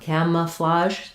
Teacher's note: We stress on the first syllable cam, and the letter A has the A, like in cat.